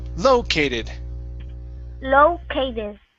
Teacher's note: we want to add the stress at the very beginning